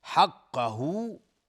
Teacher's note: القربى قاف از حروف استعلاء است و را هم حکمش استعلاء چون ساکن قبل ضمه اومده. حقه، قاف از حروف استعلاء غلیظ تلفظ میشه و های ضمیر مد صله صغری است.